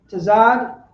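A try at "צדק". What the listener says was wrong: You got to pronounce the da. Tazadakia. Tazadakia.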